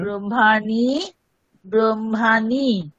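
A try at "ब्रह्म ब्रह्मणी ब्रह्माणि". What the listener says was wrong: তিনটেই আকার শুনতে লাগছে।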